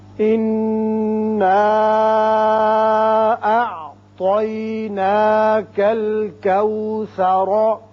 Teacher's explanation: اعطی طا پر کر کے پڑھیں گے · انا نون مشدد ہے، غنہ کریں گے. اوپر یہ مد ہے، مد منفصل چھوٹا مد، اس کو 3 الف کے برابر اوپر کو کھینچیں گے.